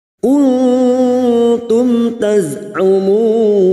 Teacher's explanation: Mim sukun bertemu ta idhar safawi, mim sukun dibaca jelas tanpa mendengung